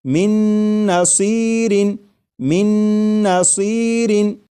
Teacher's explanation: اور میم کے بعد نون مشدد جو ہے اس کی آواز آئے گی اور غنہ کے ساتھ پڑھیں گے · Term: ادغام